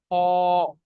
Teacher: star চিহ্নের অর্থ হলো খ হবে, মুখ গোল করে হবে, খা হবে না